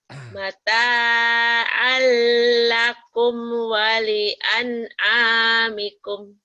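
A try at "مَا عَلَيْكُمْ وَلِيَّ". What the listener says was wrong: Alnya idgham bila gunanya jangan ditahan ya. Mata alakum al jangan ditahan di sini. Mata alakum ini idgham bila guna.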